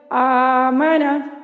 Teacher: دوسرا حمزہ ہے اس کو ہم نے پہلے حمزہ کی حرکت کے موافق حرف مدہ سے بدل کر پڑھنا ہے۔ اب یہاں پہ دیکھیے مانا، یہاں پہ اب دیکھیے پہلا حمزہ اس کی حرکت فتحہ ہے، تو فتحہ کی فیوریٹ جو حروف مدہ ہے وہ کیا ہے، الف مدہ۔